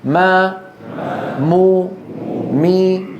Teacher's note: الشفتان تنطبقان وغنى من الخيشوم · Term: الميم